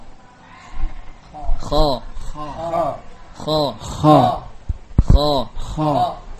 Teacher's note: Makhrajnya adalah adnal halqi, yakni ujung kerongkongan. Yakni bagian kerongkongan yang berbatasan dengan rongga mulut.